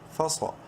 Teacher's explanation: منہ بھر کے پڑھیں گے، صاد کو بولڈ لیٹرز میں سے ہے